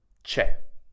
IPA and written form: t͡ʃe (CIE)